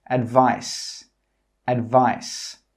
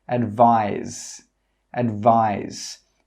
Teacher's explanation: 'Advise' with an S has a /z/ sound.